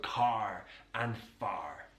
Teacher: Now, in most British English accents, it's non-rhotic, so we don't use that R. But in the West Country, that R is pronounced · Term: rhotic R